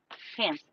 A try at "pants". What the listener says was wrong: Pants. Yeah, you emphasize the A has a long draw to it.